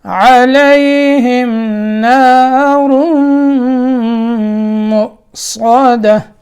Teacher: یہ نارم را کو آگے میم سے ملانا ہے, ٹھیک ہے, اور میم مشدد ہے تو یہاں کیا کرنا ہے, غنہ کرنا ہے